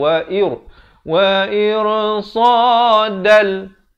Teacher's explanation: Dal di sini idgham bila gunnah, daripada irsadan jadi irsadal.